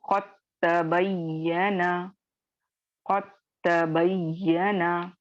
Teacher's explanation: आप देखेंगे कि दाल हम बिल्कुल अदा नहीं करेंगे। ठीक है, दाल साकिन मुकम्मल तौर पर मर्ज होकर ताम में बदल जाएगा और हम सिर्फ ताम मुशद्दद को पढ़ेंगे। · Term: इदगाम सगीर